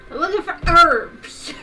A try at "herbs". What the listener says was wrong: Herbs, my darling. Herbs. There's an H. There's an H there, darling.